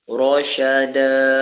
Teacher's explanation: Ra tu dibaca tafkhim, baca tebal kerana ra baris atas. Rasyada, da mad iwad.